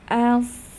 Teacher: untuk huruf idbaaknya kita lanjut ke sifat berikutnya yaitu sifat sirofir suara desis yang tajam Yang keluar dari celah kecil antara gigi seri atas dan gigi seri bawah